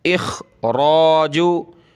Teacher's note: व इखराजु, वाव ज़बर व, हमज़ा खा ज़ेर इख, मोटा करें, खा को गले से निकालें